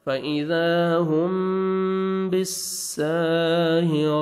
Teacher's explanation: فإذا هم میم ساکن کا اخفا ہے, میم ساکن کے بعد جب با آتا ہے اور میم مشدد آتا ہے تو غنہ کرتے ہیں, اخفا کرتے ہیں, نوز میں ساؤنڈ لے کے جائیں گے